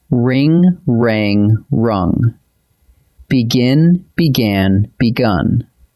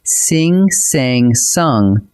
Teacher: The vowel inside the verb shifts while the consonants sit perfectly still.